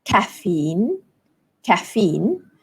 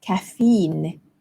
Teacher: in British English the stress falls on the first syllable